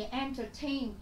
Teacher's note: Trọng âm của chúng ta cũng sẽ rơi âm tiết thứ ba